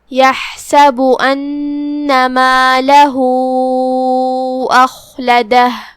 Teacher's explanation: با پہ پیش ہے تو ہمیں با کو پیش سے ادا کرنا ہے. کلمت ان میں یہاں الف پہ زبر ہے، مطلب ہم حمزہ کو اوپر سے ادا کریں گے، حمزہ کی ادائیگی حلق کے نیچے والے حصے سے ہے. پھر نون پہ تشدید ہے، لہذا 2 حرف کے برابر ہمیں نون کو پڑھنا ہے.